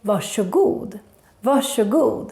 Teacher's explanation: The RS combination in the word varsågod makes the sh sound, especially in Stockholm. That's why we say varsågod and not varsågod.